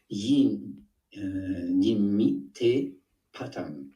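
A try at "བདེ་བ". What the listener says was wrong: Attention, c'est pas te, c'est dewa. C'est pas te. Parce que ici, par exemple, si on a yimi dewa, hein, dewa le bonheur. Yimi dewa.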